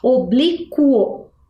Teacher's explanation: eu escutei a vogal u ali no final no meinho entre a letra q e a letra o sim né então portanto eu não tenho aqui um dígrafo porque